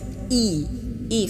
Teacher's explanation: ketika kasroh i i vokalnya ke i ya bukan ke e